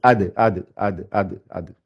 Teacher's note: Sa sortie, c'est l'extrémité de la langue avec les racines des dents du haut, c'est-à-dire à l'arrière, ici. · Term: dal